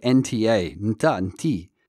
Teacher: They sound more like nta, nti. So it cuts off that vowel in the beginning. So it's like nta, nta, nti.